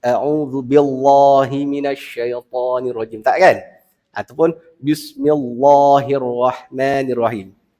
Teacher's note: Al isti'adzah dan kalimah Basmalah dua-duanya dibaca dengan tarqiq dengan nipis